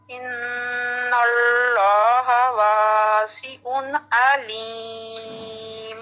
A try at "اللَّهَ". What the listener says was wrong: اللہ کا نام اللہ, اللہ یہ پورا ہیوی ہونا چاہیے. ابھی آپ کا پورا ہیوی نہیں ہے.